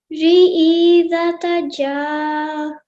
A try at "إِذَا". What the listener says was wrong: E, don't stretch it because of the simple kasra, E.